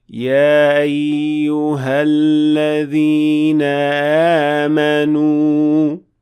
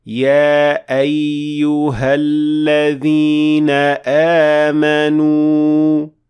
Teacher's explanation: Instead, you should always make sure that you're making that cutting sound of hamza produced by closing down the vocal cords completely. And say, يا أيها الذين آمنوا.